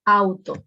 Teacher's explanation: En auto, la unión de vocal que yo tengo es en la primera sílaba. La A y la U se unen en una sola sílaba. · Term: unión de vocales